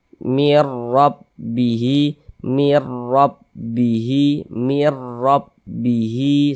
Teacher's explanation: Huruf ro yang memiliki harakat fathah maka huruf ro dibaca tafkhim. Dibaca tebal. Sehingga pangkal lisan kita naik terangkat ke atas ketika kita mengucapkannya. Tebalkan huruf rnya mirrabihi.